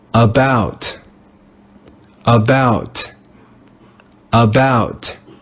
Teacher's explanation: We learned that when the English letter A is in a syllable that is not stressed, it is read with the sound of the schwa, In this word, the letter A is in a syllable that is not stressed.